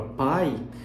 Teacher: a gente, com o ouvido mais apurado, percebe essa subida sonora do P para o A e depois a descida quando eu falo o I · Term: glide